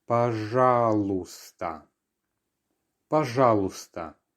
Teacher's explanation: So we have another silent letter here. The y towards the end is not heard.